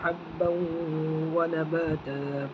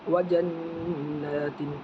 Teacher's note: نون میں غنہ کریں گے، نون کے اوپر تشدید ہے اس وجہ سے ایک الف کے برابر غنہ ہوگا اور پھر ایک الف کے برابر کھینچے گا غنہ ہو کے۔